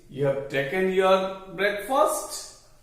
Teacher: The statement in form and but asked with a rising tone, and so it expects an answer yes or no. So this is a tonic question, and from the tone it appears like a question. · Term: intonational question